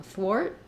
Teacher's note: I don't let that t out I'm going to be sort of shorter on the vowel